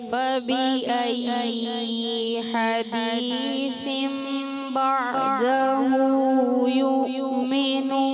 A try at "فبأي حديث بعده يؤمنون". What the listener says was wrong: ایسے لگا ہے فبأي تھوڑا سا لمبا حرکت لمبی ہوئی ہے دوبارہ پڑھیں